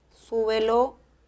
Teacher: súbelo lleva el acento en la primera sílaba